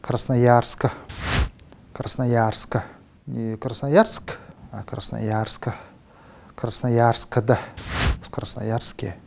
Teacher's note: бурятский язык пытается избавиться от сочетания согласных и разбавляет это сочетание путем повторения гласного вставки гласного в конце вот этого сочетания